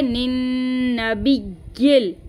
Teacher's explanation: फिर यहाँ पे ये वाले नून को इस वाले नून के साथ मिलाएंगे। यहाँ पे नून मुशद्दद का हम गुन्ना करेंगे। ठीक है, निन नबिय्यिल, यहाँ पे तशदीद को ज़ाहिर करेंगे और या को लाम के साथ मिला देंगे।